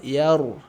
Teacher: sebelumnya huruf ya berharakat fathah maka ro kita baca dalam kondisi tebal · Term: ro tebal